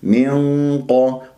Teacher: وعند كسرة الميم نون مع القاف راح يكون عندي إخفاء بغنة مفخمة مرتبة ثانية ، ليش ثانية؟ لأنه القاف مفخم مرتبة ثانية مفتوح، هالغنة ليش